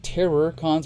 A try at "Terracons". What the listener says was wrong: Terracons. It's spelled like terror, but it's pronounced like Terracons.